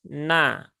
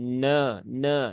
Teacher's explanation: Biasanya karena belakangnya huruf tebal, bagi orang-orang yang sudah bisa menebalkan huruf, terkadang tanpa disadari huruf yang ada di depan huruf-huruf isti'la atau huruf-huruf idbaq itu ikut menebal. Maka pastikan di sini nunnya itu tipis